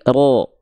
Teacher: Kalau huruf tebal ketika fathah vokal O dia tidak senyum.